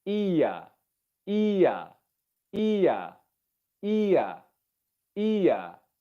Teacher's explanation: my tongue pulls back in the mouth and down